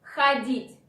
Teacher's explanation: O after H is not stressed. This is why it should be pronounced like A.